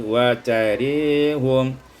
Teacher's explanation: Pada ayat yang 198 wa tarahum imalatu fatatir ra, dibacakan imalah fathah ra menjadi wa tarihum.